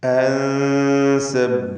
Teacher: അൻ എന്നതിലെ സാക്കിന താനൂനിനെ ഇഖ്ഫ ഹഖീഖി നൽകി അവ്യക്തമാക്കി മണിക്കുക, മറച്ചു മണിച്ചുച്ചരിക്കുക.